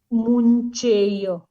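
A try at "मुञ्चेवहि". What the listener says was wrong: मुंचे वही। उत्तम मुंचे नहीं, मुंचे वही।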